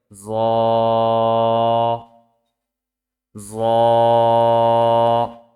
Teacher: জিহ্বার আগা সামনের উপরের দুই দাঁতের আগার সঙ্গে লাগিয়ে উচ্চারিত হয়